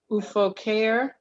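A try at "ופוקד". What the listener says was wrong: That's a dalet at the end.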